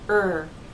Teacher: the tip of your tongue does not touch the bump or any part of the roof of your mouth okay now because the front part of your tongue is raised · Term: ER sound